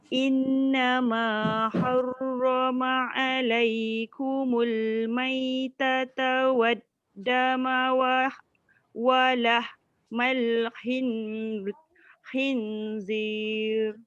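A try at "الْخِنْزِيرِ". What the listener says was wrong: Khin tu nun jangan lekat sangat dengan langit sebab dia hukum ikhfa. Walahmal lidah kat tengah je. Khinzir.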